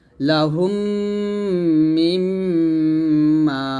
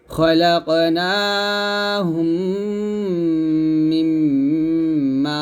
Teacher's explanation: মিমের উপর তাসি আসছে এটা হলো ওয়াজিব গুন্না এখনো গুন্না হবে দুই জায়গায় গুন্না হবে একটা হচ্ছে মিম সাকিনের ইদকম গুন্না আর একটা হচ্ছে ওয়াজিব গুন্না